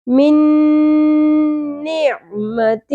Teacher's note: نون ساکن کے بعد نون مشدد آ گیا، دونوں میں ادغام ہو جائے گا، ٹھیک ہے؟ مل جائیں گے دونوں نون.